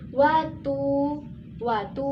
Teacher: mad tabi'i dibaca 2 harokat